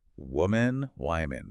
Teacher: But plural women, that first vowel changes completely. It sound like the I in big or sit.